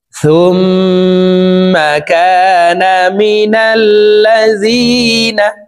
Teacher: এখানে ওয়াজিব গুনাহ হরকতের বামে মিমের উপরে তাসদিদ আছে এই কারণে এই সা তাসদিদ ওয়ালা মিমের সাথে 3 সেকেন্ড পরিমাণ গুনাহ করে ধরে রেখে পড়ব